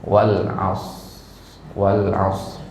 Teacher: Shad dengan ro ini makhrajnya berdekatan ya yaitu sama-sama di lisan ya walas walas ya Sehingga enggak terlalu kedengaran bunyinya ya enggak terlalu